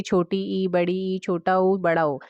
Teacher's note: संवृत स्वर जिसके उच्चारण में कम मुंह खुलता है